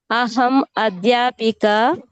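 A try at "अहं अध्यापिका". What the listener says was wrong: No Visarga. Adhyapika. That's all.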